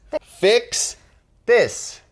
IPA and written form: fɪks ðɪs (FIX THIS)